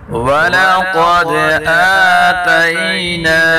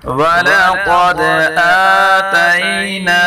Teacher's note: قاف کو پر پڑھیں گے، دال میں کلکلا کریں گے